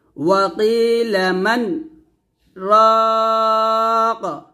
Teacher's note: মানে এসে আমরা আমাদের আওয়াজ বন্ধ করব, তবে শ্বাস ফেলবো না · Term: সাকতা